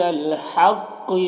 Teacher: یہاں پر الف لام حروف قمری ہا کے شروع میں ہے تو لام کو پڑھیں گے، الف کو نہیں پڑھیں گے. قاف حروف مستعلیہ میں سے پر پڑھیں گے